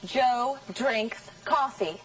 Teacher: That's right. All of the words are stressed.